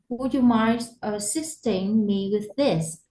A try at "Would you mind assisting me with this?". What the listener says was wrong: Okay, very good.